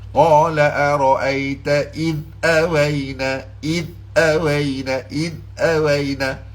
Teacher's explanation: Jadi bagaimana kita nak buat tak bagi dia qalqalah, hujung lidah kita tekan di makhraj huruf dal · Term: jangan ada qalqalah